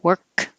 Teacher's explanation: Work, no K, work, just hold it.